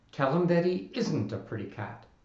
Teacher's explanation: There's a rule that reduces not to nt by taking its vowel away and glomming it onto the preceding word